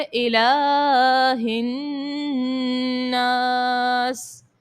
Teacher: لام کو ایک الف کی مقدار تک کھینچیں گے, نون مشدد ہے غنہ کریں گے اور سین کو وقف کرنے کی صورت میں ساکن کر دیں گے. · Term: کھڑی حرکات